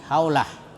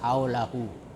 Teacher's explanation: Tapi kalau berhenti, ya, dibaca mati haulah. Tapi kalau dibaca bersambung haulahu.